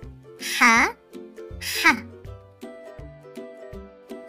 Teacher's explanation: The sound of ha comes from the middle part of throat. We don't say it as the English sound ha, as in house. We say it as ha, from the middle throat.